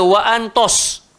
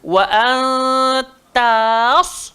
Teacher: Tak nak terkesan dengan kegemukan sad.